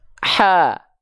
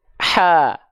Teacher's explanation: H kecil tengah tenggorokan H besar pangkal tenggorokan